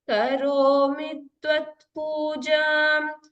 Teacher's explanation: There is a dvitvam here. The t is doubling.